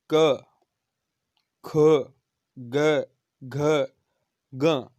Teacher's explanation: इनमें कंठ यानी थोड़ी सी अंदर से ध्वनि आती हुई प्रतीत होती है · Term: कंठ्य वर्ण